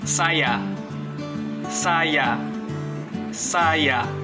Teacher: Daerah artikulasinya terdapat pada titik pertemuan lidah dan langit-langit keras. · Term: lamino-palatal paduan bersuara